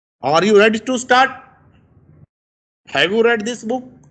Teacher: Now see, I start with slow voice and when I end, the voice rises. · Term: rising intonation